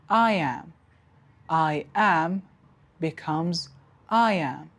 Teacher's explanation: So we have introduced a y sound, I am. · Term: intrusion